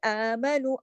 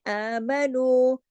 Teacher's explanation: सारे बारीक हुरूफ है। आमनु, वाव मद्दा है, वाव मद्दा दो हरकत खींचता है।